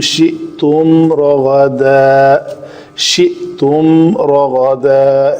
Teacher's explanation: حمزہ کے اوپر جزم ہے تو اس کو جھٹکے سے ادا کریں گے